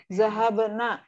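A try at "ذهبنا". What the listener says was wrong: Aywa.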